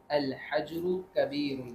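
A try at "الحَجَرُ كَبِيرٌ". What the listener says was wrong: अल हजरु नहीं पढ़ेंगे, अल हजरु, जिम पर भी जबर पढ़ेंगे, जिम पर भी फतह पढ़ेंगे, हरकत पढ़ेंगे उस पर। अल हजरु, क्या पढ़ेंगे हम इसको? अल हजरु कबीरुन, अल हजरु कबीरुन।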